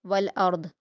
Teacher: रा और दाद दोनों को पुर पढ़ा जाएगा